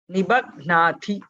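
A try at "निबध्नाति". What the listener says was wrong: See, now also the Thi became a Mahaprana. So, last time I think the Ba became a Mahaprana. Nibadhnati. Now again, Ba was a Mahaprana. Bha should not be a Mahaprana. Nibadhna. So this, I think, whenever there is a Mahaprana in the vicinity, your Alpa Pranas are also, they tend to be heard as Mahaprana. So that you should just focus on that.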